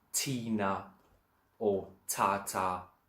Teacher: T and a H does not make a th sound, not there or that. T and a H is t. It always stays a hard T.